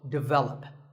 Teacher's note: This is pronounced wrongly by many learners of English as develop. But the first syllable is actually de, and the stress is on the second syllable, so develop.